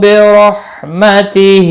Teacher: برحمتہ را زبر کی وجہ سے پر پڑھا جائے گا۔